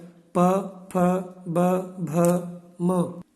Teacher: प वर्ग में आता है प, फ, ब, भ, म। इन सब का उच्चारण स्थान है ओष्ठौ।